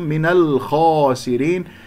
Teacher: الخاء مفخمة مرتبة أولى لأنها مفتوحة بعدها ألف، اكسر السين والراء والراء مرققة، ولا تجعلن في هذه الياء، نقف على نون ساكنة.